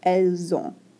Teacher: And then we have another nasalization. This T isn't pronounced at all, and then the N is nasalized.